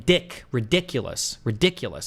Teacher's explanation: The accent would go over dick, right?